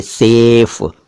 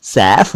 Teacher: सेफ कहने का मतलब यह है कि स पर एक मात्रा है, एक ही मात्रा है, और इसको बोलते वक्त हम अपना मुंह कम खोल रहे हैं, देखिए सेफ। लेकिन जब हम इसका उच्चारण बदलकर सैफ कर देते हैं यानी अपना मुंह ज्यादा खोलते हैं, सैफ बोलते हैं, तो सैफ एक अलग शब्द है जो कि एक नाम भी होता है और इसका अर्थ होता है तलवार यानी सोर्ड।